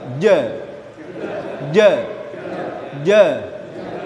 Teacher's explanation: Artinya tidak ada aliran nafas yang mengalir ketika huruf jim diucapkan. · Tengah lidah ditemukan dengan langit-langit bagian depan.